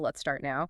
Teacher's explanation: First is falling pitch. Your voice goes down. You use this for making statements, giving commands, or asking questions like who, what, where, for example.